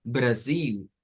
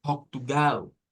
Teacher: Por ejemplo, las palabras que están aquí escritas, que es para decir los nombres de estos países, si las decimos con el acento de portugués brasileño, decimos Brasil y decimos Portugal. Se cambia la L por U, pero eso solo sucede en el acento del portugués do Brasil